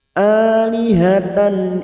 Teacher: nun sukun bertemu ya, namanya bacaan idgham bi gunnah, masuk dan mendengung selama 3 harakat.